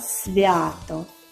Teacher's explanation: перший звук с твердий приголосний